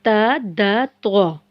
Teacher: जुबान की नोक को ऊपर के 2 दांतों की जड़ से लगाकर अदा किया जाता है